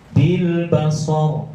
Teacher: Sebelum rohnya harokatnya apa? Fathah. Kalau fathah berarti tebal.